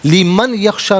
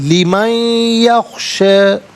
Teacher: تذکرۃ لی نہیں، تذکرۃ لی، لیمن یخشا ملا کر پڑھیں گے لیمن، اور نون ساکن کو یخشا کی یا کے ساتھ ملائیں گے، درمیان میں اور یا کی آواز کو غنّے کے ساتھ ادا کریں گے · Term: یرملون کا قاعدہ